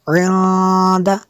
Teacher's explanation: نون ساکن کے بعد دال ہے، حروف اخفا میں سے یہاں پہ اخفا ہوگا اس لیے غنہ کیا